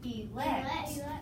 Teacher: An E in the open, unaccented syllable is going to be half long, and we're going to code it with a modified macron.